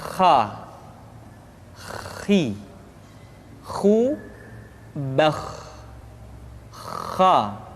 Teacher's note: pengucapan huruf kha persis terdengar seperti orang yang tidur dalam keadaan mengorok